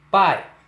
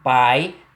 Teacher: perceba que a vogal A está vindo antes da semivogal I e que entre elas não existe consoante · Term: ditongo decrescente